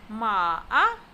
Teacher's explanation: Ma-a is said with the falling rising tone, also known as the third tone